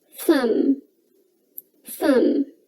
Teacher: All right, next we have thumb. Now, you don't pronounce the letter B in thumb